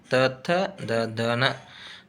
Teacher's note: ಅಂದ್ರೆ ತ ಥ ದ ಧನ ದಂತ್ಯ ಇವುಗಳು ಹಲ್ಲುಗಳ ಬಳಿ ಅಂದ್ರೆ ಹಲ್ಲಿನಾಗುವ ಹಲ್ಲುಗಳ ಸಮೀಪದಲ್ಲಿ ಹುಟ್ಟುವುದರಿಂದ ಇವುಗಳಿಗೆ ದಂತ್ಯ ಅಕ್ಷರಗಳು ಅಂತ ಕರೀತಾರು